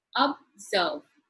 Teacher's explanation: It is in the second syllable that the stress is given, that is observe.